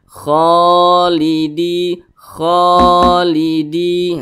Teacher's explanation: panjang nah ini huruf ko di atasnya ada Alif kecilah maka huruf ko dibaca panjang nah ini namanya Mad Thobi'i panjangnya itu dua harakat atau kira-kira dua ketukan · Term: mad tabi'i